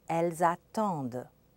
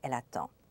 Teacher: The D is heard in the plural and not in the singular, but there's something else going on. The S at the end of elle, meaning they, is pronounced and it sounds like a Z. It's a result of liaison.